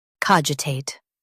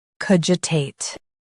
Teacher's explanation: US uses ca, UK uses co.